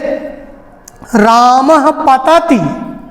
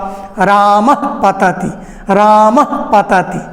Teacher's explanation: जैसे रामः पतति, तो इसको जल्दी से रामः जो विसर्ग है माँ के बाद, उस विसर्ग को चूंकि आगे प है, प के पहले विसर्ग होने के कारण वो उपधमानीय होगा और उपधमानीय का उच्चारण ओष्ठ होगा, दोनों ओष्ठ होगा। रामः पतति, रामः पतति, इसलिए वो ओष्ठ ही वो विसर्ग का भी उच्चारण, यद्यपि विसर्ग का उच्चारण स्थान कंठ है लेकिन अर्ध विसर्ग का उच्चारण स्थान ओष्ठ है।